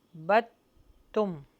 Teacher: next واو پر ہونٹوں کو گول کریں، وا لا نا آ بی دم ما بت، یہاں پر جو دال کے اوپر جزم ہے اس کو ہم حذف کر دیں گے اور اس کو با کو ملا دیں گے ہم تا سے